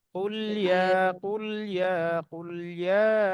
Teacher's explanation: লামের সাউন্ডটা চলতে থাকবে, তার মাঝখানে ইয়া শুরু হয়ে যাবে।